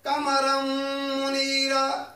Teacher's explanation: تنوین کے بعد میم آ گیا ہے تو ہم غنہ کریں گے